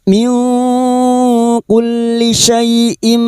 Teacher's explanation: kita samarkan bunyi nun sukun dan mendengung selama 3 harokat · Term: ikfa hakiki